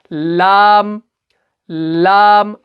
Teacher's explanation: इसमें क्या होता है कि जो जुबान का जो सिर्रा होता है, जो जुबान की जो नोक होती है, वो उठकर ऊपर वाले सख्त तालू से लगता है। यानी ऊपर वाला जो, अगर आप ऊपर वाले तालों को देखें, इसके अंदर यहाँ पर एक रिंग जैसी होती है।